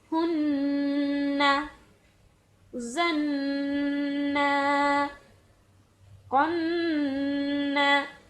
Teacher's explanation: میں نے نون کی آواز کو اپنے ناک سے جاری رکھا ہے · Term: نون مشدد